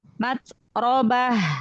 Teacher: Ha besar kasih sifat rokhwah, hamas. Matrobah. Jadi alirkan nafas dengan suaranya